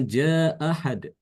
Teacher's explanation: bacaan Imam Al-Bazi adalah dengan cara menghilangkan hamzah pertama